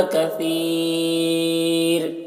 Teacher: را کو باریک پڑھیں گے کیونکہ را ساکنہ سے پہلے یا ساکن ہے